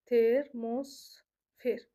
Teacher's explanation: Termosfer sözündə vurğu son hecadadır.